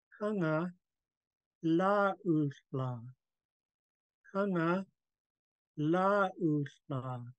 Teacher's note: the only thing different is a glottal stop and a UU added onto la.